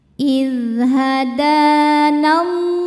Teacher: alif lam ini kita lewatin jangan dibaca masuk langsung ke lam berikutnya atau disebut idgham syamsi.